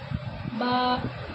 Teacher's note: با کا مخرج دونوں ہونٹوں کی تلے کا حصہ